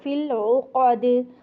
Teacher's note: عین کو نرمی کے ساتھ، حمزہ کی طرح کڑک نہیں پڑھنا ہے اس کو